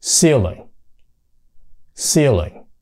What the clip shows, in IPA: ˈsiːlɪŋ